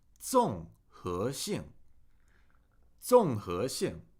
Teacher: Fourth tone, falling tone. Second tone, rising. Fourth tone, falling.